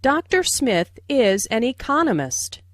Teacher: Notice the stress on economist. This content word has new information, so it is emphasized.